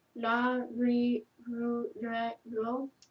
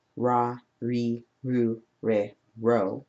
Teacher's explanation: It has a softer R that is somewhere in between the L sound and the R sound.